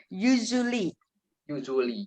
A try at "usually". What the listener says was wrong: Terlalu apa ya? Terlalu keras ya, terlalu agak ringan mungkin. Bacanya S agak nggak S persis, agak Z tapi U-nya kayaknya terlalu berat ya.